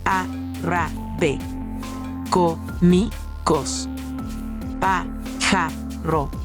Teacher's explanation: Esdrújulas. La fuerza de voz es mayor en la antepenúltima sílaba.